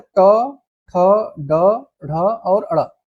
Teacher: जीभ का अग्रभाग पीछे की ओर मुड़कर तालु को स्पर्श करे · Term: मूर्धन्य